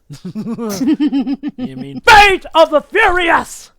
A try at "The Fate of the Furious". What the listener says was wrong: No, you gotta yell on Furious, because, you know, Furious.